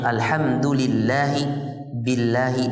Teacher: Lafaz Allah apabila huruf sebelumnya berharokat kasrah maka dibaca dengan tarqiq